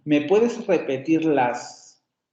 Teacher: Dejo suspendida la curva melódica en la última inflexión, en la última sílaba tónica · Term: enunciados truncados